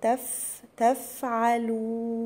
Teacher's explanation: هنا الماء، هنا في برضو مد طبيعي حركتين. تفعلون، هنا الفاء من حروف الهمس، طلع فيها وش، اقول تف تفعلون.